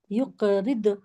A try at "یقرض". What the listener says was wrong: جی ضاد پہ کوشش کرے قلقلہ نہ نکلے جیسے زبان کو جا کے روک لیے وہاں پہ ٹھیک ہے یقرض